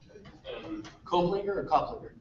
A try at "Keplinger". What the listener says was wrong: That's Keplinger. There's no O.